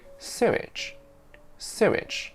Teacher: It's simply wrong to say it like sewage. But we do add a tiny bit of w sound between su and ich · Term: intrusion